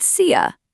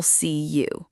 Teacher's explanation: Yes, in casual everyday speech, the word you almost always turns into a short, relaxed ya sound at the end of sentences